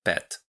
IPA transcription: pɛt